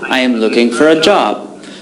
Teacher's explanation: we don't say for but we say fur